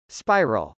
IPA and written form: spˈaɪrəl (spiral)